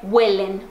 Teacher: porque a sílaba tônica tá no começo